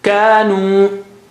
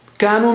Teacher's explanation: So this has 2 mads. One is alif mad after ka, and second is waw mad after noon, nu. And the last alif is not preceded by fatha, so it is not alif mad, the last alif.